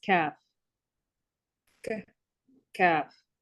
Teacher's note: It's between the hard and the soft part of the top of the mouth. And the kaf is under the qaf a little bit, meaning closer to the mouth and farther from the throat in the qaf.